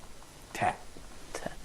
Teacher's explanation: It's pronounced like a clear frontal English Ta, but unlike Ta in English, no aspiration in pronouncing it.